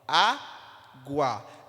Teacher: este u é uma semivogal e este a é uma vogal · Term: ditongo